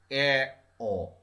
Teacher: আমাদের জিভটা যতটা ওপরে ছিল, একদম উপরে ছিল, তার থেকে 2/3 নিচে আছে, নিচে নেমে এসেছে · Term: নিম্ন মধ্য স্বরধ্বনি